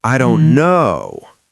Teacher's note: his bottom lip pushed out just a little, and he prolonged the word no